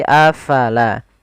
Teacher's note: pada lafal afala, fa harus alirkan nafasnya. La jangan dibaca apalah, tapi afala.